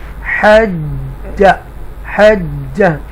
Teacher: تشدید سائن ہے تو اس کو ایکسٹرا سٹریس کے ساتھ لٹل بٹ پاز کریں گے، یہاں پر رک کر پھر ہم اس کو ادا کریں گے.